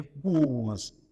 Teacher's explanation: Le O ouvert suivi par le petit z se transforme en O fermé et se transcrit et se prononce en O.